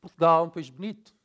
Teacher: In Brazilian Portuguese, also, the syllables have the same intonation. In the European, the unstressed syllables, we reduce it and frequently elided, so they're gonna kind of disappear.